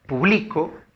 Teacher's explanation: A ver, el ejemplo que aparece ahí, tenemos la palabra publico, y la palabra publico, la mayor fuerza de voz está en bli, ¿no? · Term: acento